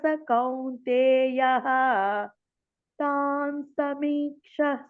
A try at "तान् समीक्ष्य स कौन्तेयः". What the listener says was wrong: సమీక్ష యా కూడా రావాలి అక్కడ క్ష కింద యా కూడా ఉంది తాన్ సమీక్ష్య స